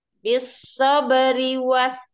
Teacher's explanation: Rinya jangan panjang ya, Rinya jangan panjang.